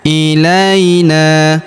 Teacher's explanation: huruf na kita panjangkan dua harakat karena Terdapat alif di depannya